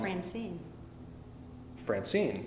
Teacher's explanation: a pair of syllables in which the first syllable uh is unstressed and the second syllable is stressed